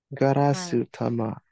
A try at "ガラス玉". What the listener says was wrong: So in this case, we actually do have rendaku here. So it becomes garazu dama.